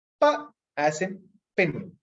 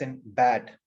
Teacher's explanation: you completely block the air complete closure then you release the sound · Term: stops